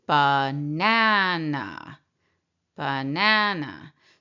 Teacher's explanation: So the first a is a schwa sound. We hear a ba.